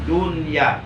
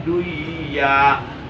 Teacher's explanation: Jadi membacanya yang benar dunya, tidak boleh dibaca duya. Jadi nun matinya jangan diidghamkan ke iya. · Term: ijhar